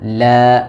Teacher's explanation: pada lafaz Allah huruf lamnya ditipiskan